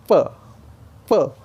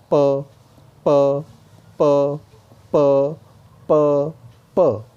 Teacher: तो वो अपनी फिंगर रखेगा और दबाने की कोशिश करेगा, प प, तो प निकलेगा। ठीक है, होंठों पे प्रेशर आएगा, दोनों होंठ मिलेंगे, होंठों पे प्रेशर आएगा तो प निकलेगा।